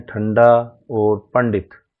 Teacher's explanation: ठंडा और पंडित दोनों ही शब्दों में अनुस्वार के बाद ड का प्रयोग हुआ है और ट वर्ग का है अतः अनुस्वार का उच्चारण ण होगा